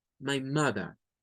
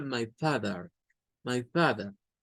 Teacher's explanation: No las pronuncian de esa misma manera. Para los británicos esa R no suena y para decir madre dicen como mother, my mother.